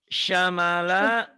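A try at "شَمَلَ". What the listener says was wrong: kurang, mulutnya kurang ngebuka tuh.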